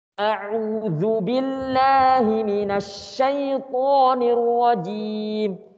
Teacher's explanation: A'udzu, A-nya panjang satu ayunan. Tapi langsung ya, A enggak boleh panjang tadi ya.